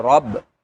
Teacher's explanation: را کے اوپر زبر ہے اس لیے اس را کو موٹا کریں گے